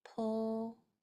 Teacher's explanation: That L sound is made with your tongue going either up behind your top teeth or in between.